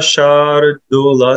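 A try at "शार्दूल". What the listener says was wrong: Just a шардула at that place. The ша got кратки. It got shorter. It should be longer. Якшаракшаса шардула, шардула.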